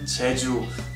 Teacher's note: the first 지읒 sounds almost like a CH, while the second one sounds quite softer